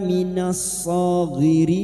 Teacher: lam takrif yang bertemu shad atau alif lam yang bertemu shad Idogam syamsiah